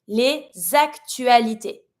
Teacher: I'm pronouncing my s from le and I'm linking it with my a